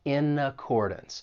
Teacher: Now, when you pronounce this phrase, of course, we can link those first two words. We can link that consonant N and in with the vowel sound in accordance